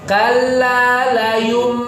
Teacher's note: Secara kaidah tajwid namanya iklab. Ya, berubah dari n menjadi m gitu ya. Cuma cara bacanya bisa ada dua.